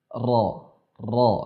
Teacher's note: huruf ra makhrajnya ialah dari ujung lidah, dari bagian ujung lidah kemudian bertemu dengan gusi bagian atas, sehingga kita mengucapkannya ra, ya, bertemu dengan gusi bagian atas, ra, seperti ini. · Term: huruf ro